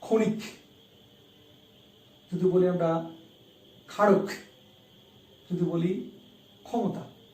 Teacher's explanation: এই শব্দগুলোর প্রথমে ক্ষিয় আছে, উচ্চারণটা হচ্ছে খ।